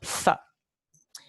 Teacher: el fonema interdental sordo th, like the TH in throw, th. Este fonema tiene un solo alófono y es el alófono fiel.